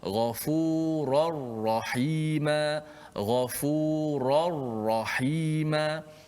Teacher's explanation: Jangan minra, jangan ada unsur-unsur nun lagi. Kerana nun masuk secara total masuk dalam ra. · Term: idgham bila gunnah